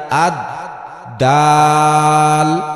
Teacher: দাল বলতে যেমন, 8 নম্বর মাখরাজ, জিহ্বার আগা সামনের উপরের 2 দাঁতের গোড়ার সাথে লাগাইয়া আদ দাল উচ্চারিত হয়। ডাল পড়তে লম্বা টান ভুলবো না, অল্প টান হবে না।